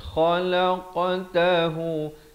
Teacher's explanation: Qaf dan ta dibulatkan. Khalaqtahu. Jangan pepeskan mulut jadi khalaqa. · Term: khakhalah sughra